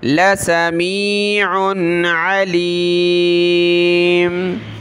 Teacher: لسمی پڑھنا، لا سمی نہیں پڑھنا، ٹھیک ہے، کھینچنا نہیں ہے